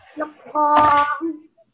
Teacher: you didn't give qaf an emphasis. So it has shadda.